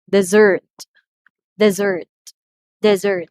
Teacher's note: the second syllable receives the stress because we are pertaining to the verb